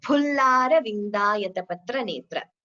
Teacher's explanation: the pronunciation is pa, so it shouldn't be fa, not like fruit.